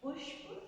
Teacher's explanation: मूर्धन्य श होता है जिसे हम बोलने में दांतों के पीछे जो मूर्धा एक बोन होती है उभरी हुई, उसको टच करते हैं, उसे मूर्धा कहा जाता है, इसलिए इसे मूर्धन श बोला जाता है।